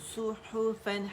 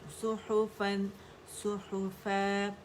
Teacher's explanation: ح باریک ہوگا، اس کو اس کے ساتھ موٹا نہیں کریں گے